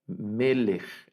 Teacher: Por ejemplo, aquí leemos melech y vean que esta es una kaf final y tiene aquí arriba, tiene la vocal, es un sheva y en esa posición el sheva no suena, no lo vamos a pronunciar, es decir, no leemos meleje, ¿verdad? · A estas palabras se les conoce como segoladas, las palabras segoladas. Y entonces las palabras segoladas, el acento va en la primera sílaba